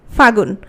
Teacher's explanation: ফাল্গুন থেকে যখন ফাগুন হচ্ছে, কোন জিনিসটা লোপ পাচ্ছে? লটা লোপ পাচ্ছে। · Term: অন্তর্হতি